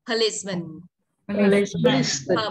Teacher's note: không phải po, tiếng Anh không có âm o ạ, mà âm ơ ạ.